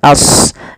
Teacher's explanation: Dan kita hukumi ia dengan mad jaiz munfasil. Kemudian pada lafal ashabu, sodnya tebalkan as, jangan ashabu, jangan sin, tapi dia huruf sod sesuai dengan makhraj dan sifatnya.